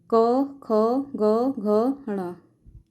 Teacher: जो क वर्ग है उसका उच्चारण स्थान होता है कंठ